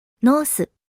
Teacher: As Japanese doesn't have the th sounds, English words are often adapted into su sounds if the th is at the end of the word.